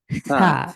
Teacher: জিভটা অবশ্যই দাঁতের বাইরে বের করতে হবে, জিভের আগাটা সা, দাঁত সা, দিয়ে এভাবে।